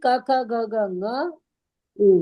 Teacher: the nga will come with the nose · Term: Anunasikas